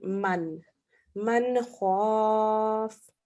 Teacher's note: In this case, it's a izhar. We say the noon clearly for 1 second.